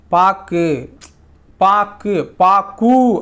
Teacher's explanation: கு அப்படிங்கிற எழுத்து சொல்லின் இறுதியில் வரும்பொழுது ஒரு மாத்திரைக்கு பதிலாக அரை மாத்திரை அளவே ஒலிக்குது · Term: குற்றிய லுகரம்